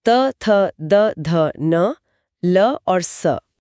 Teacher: हम अब त और स बिना जीभ को दांतों से छुए बोल ही नहीं सकती।